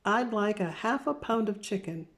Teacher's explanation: I'd like a half pound of chicken. There's no L sound in the word half.